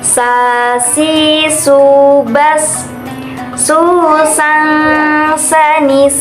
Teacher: ke-12 yaitu huruf Sin atau sah dalam lafalkan huruf Sin ini kita harus mengucapkannya menggunakan lidah terdekat hampir di atas dua gigi seri bagian bawah